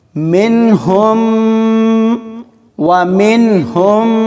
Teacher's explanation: وَمِنْهُمْ، مِنْهُمْ، اس ہا کو آگے والی میم کے ساتھ ملائیں گے، کیونکہ یہ میم ساکن ہوگی اور ہا کو میم مشدد والی کے ساتھ ملایا جائے گا، تو ملاتے ہوئے غنہ ہوگا، یعنی آواز کو 1 سے 2 سیکنڈ تک ناک میں پڑھیں گے